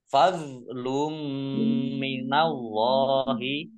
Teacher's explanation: Mim tasdid dibaca gunnah atau mendengung, ditahan 2 harokat biar tampak dengungnya.